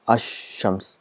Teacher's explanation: the al is written, it becomes silent, and the sound of sheen is doubled. This is ash shams, so 2 times. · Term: silent lam